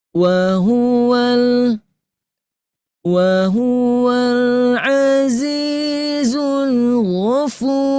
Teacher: Wahuwal naik ya. Wahuwal azizul ghafur. Naik Bapak Ibu ya ke nada 6.